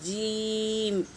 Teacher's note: زبان پہلے اوپر کے تالو میں تھوڑا ٹچ ہو جائے گی، پھر ہٹ کر جیم ادا ہوتا ہے · تو زبان جیم کے لیے تھوڑا ٹچ ہوتی ہے اور ہٹ جاتی ہے، جیم۔ زبان کا بیچ والا حصہ اوپر کے تالو کو لگے تو جیم ادا ہوتا ہے